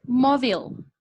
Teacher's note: Aquí tenemos que sí, termina en LE, igual que humble, igual que purple, pero cuando la estamos pronunciando, espérenme, cambio acá de color, termina entonces en LE, pero cuando la estamos pronunciando nosotros decimos mobile, y esa E nos queda como si fuera insonora. Entonces, como no tiene sonido, no contaría como sílaba.